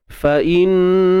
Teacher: Kalimah Allah kita baca dengan tebal.